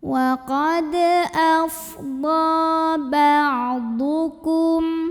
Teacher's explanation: Wa qad afdha mad tabi'inya mad tabi'i muqaddar karena ditulis dalam bentuk fathah panjang di atas huruf dhad. Maka cara bacanya kita panjangkan dhadnya 2 harokat.